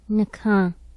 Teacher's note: Low central nasalized unrounded